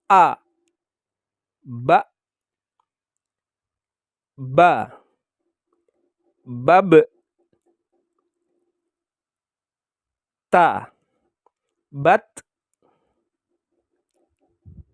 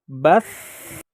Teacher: Ini sangat nampak sekali ketika huruf fa berharokat sukun. Maka ketika diucapkan, meskipun hurufnya mati, suara masih tetap terus berjalan. Bas, walaupun dalam hal ini jalannya suara yang keluar itu ada batasannya. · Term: rikhwah